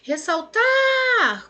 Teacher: A última sílaba é a mais forte. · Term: oxítona